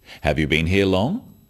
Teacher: questions that start with have you are yes no questions so they have a rising tone